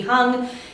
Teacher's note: that has like a nice little H to start you off on to get the air flowing into the NG space